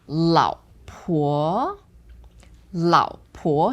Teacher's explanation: So the first one is third tone, second one second tone.